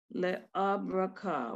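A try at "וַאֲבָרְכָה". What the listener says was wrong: The al comes before the resh. Break it into syllables. The avar ha. The avar ha.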